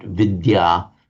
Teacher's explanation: the d and the y pronounced separately in Sanskrit